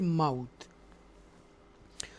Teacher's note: یہ واو جو ہے واو لین میں سے ہے, سافٹلی ہم اس کو ادا کریں گے